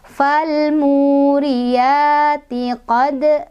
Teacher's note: Ada qalqalah sughra karena ada huruf qalqalah yaitu dal yang sukun dan sukunnya asli.